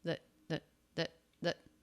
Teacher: we do have a quick voiced th here I believe schwa and a stop t